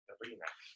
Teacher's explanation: With a nice rolling R.